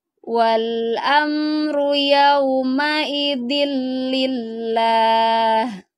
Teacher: Harus ditekan dillillah, tapi lafadz lamnya ini harus tipis aja, lah dengan bunyi lah.